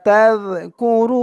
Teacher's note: এক আলিফ টান পেশের পরে ওয়া সাকিন তা দিয়ে জাল ধরবে এই জালের উচ্চারণটা কিন্তু একদম নরম পাতলা করতে হবে জিহ্বার মাথা উপরের দাঁতের মাথাতে লাগবে